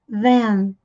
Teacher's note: TH com som de Z, com a pontinha da língua presa entre os dentes